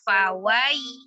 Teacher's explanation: Bacanya disempurnakan dulu harokat fathah di huruf waw, baru ya sukunnya turunkan bibir dan rahang bawahnya. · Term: harfulin